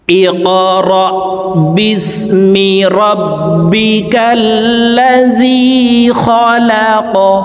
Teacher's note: কফ হরফ কলকলার হরফ উপরের দিকে ধাবিত করে ধাক্কা দিয়ে উচ্চারণ করব